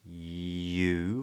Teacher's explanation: If you ask, so then we get a little yod, yeah. Body of the tongue is high and drops. You, followed by an oo vowel, where the lips round.